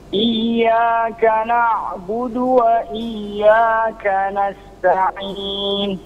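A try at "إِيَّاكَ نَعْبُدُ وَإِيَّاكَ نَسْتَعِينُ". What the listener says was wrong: Sama, sinnya alirkan dan tajamkan suaranya. Nasta'in.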